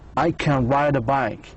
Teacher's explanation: So the stress was on the ride and the bike after can.